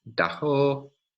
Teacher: with a velar fricative there between vowels